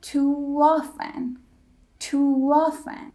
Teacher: word ends in o or o o vowel as in U when our lips are round o o we put the W sound to create that nice link